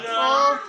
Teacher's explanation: कंठोष्ठी से। कंठ और ओष्ठ यानी कि कंठ और होंठ दोनों मिलने से।